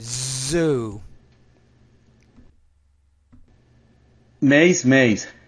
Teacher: the Z again are different in Spanish so you have to remember a lot more vibration